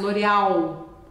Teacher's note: o l português a gente costuma engolir